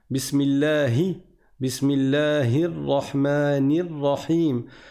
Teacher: on fait un vrai I, on fait pas un E accent aigu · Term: kasra